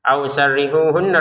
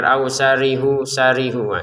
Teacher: ausarrihuhunna roknya ditekan ya, jangan sekedar ausarihu sarihu. Sarrihu ditekan roknya.